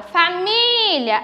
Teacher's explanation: a sílaba acentuada é a sílaba mia